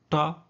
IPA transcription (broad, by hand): ʈ